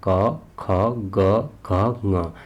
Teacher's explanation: सबसे पहला आता है कंठ, जिनका उद्भव कंठ और जीभ के निचले भाग से होता है।